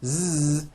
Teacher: the voiced Z sound, Z, in the word thousand